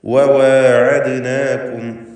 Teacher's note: 2 ചുണ്ടുകളിൽ നിന്ന് തന്നെ വാവ് ഉച്ചരിക്കണം. ചുണ്ട് വൃത്താകൃതിയിലായിരിക്കും വാവ് ഉച്ചരിക്കുമ്പോൾ ഉണ്ടാവുക. ഇത് പ്രത്യേകം ശ്രദ്ധിക്കേണ്ട കാര്യമാണ്.